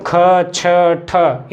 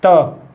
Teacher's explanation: ख, छ, ठ इनमें अधिक वायु निकल ली, त इसमें कम